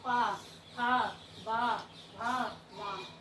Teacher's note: ओठ से पा, जब पा बोल रहे हैं तो एक दूसरे से वो टच हो रहे हैं